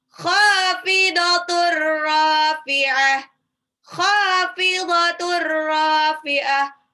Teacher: itu tanwin pada tak marbutoh ketemu ro, itu langsung lebur aja. Itu namanya idgham bila gunnah. Rafi'ah, ro-nya 2 harokat, matabi'i.